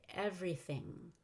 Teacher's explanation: When you say everything, make sure the Y has a long E.